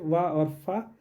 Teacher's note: दंतोष्ठ से वा और फा